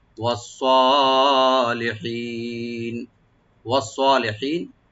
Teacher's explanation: সোয়াটাকে deep করে এক আলিফ টানবেন, লি বলবো আর হি এক আলিফ টানবেন, নুনে কোনো টান নাই।